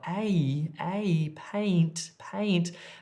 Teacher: it's like two vowels when you're gliding across two sounds at once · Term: multi vowel